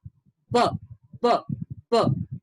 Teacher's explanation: Your vocal cords vibrate. That's why it's called a voiced sound.